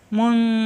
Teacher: নুন সাকিনের পরে আসছে জাল ইকফা গুন্না